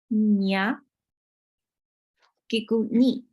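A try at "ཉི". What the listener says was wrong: Not ni. Ni. You have to put your tongue on the roof of your mouth. Ni.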